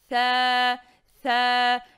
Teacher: ces lettres se prononcent avec l'extrémité de la langue au contact de l'extrémité des incisives supérieures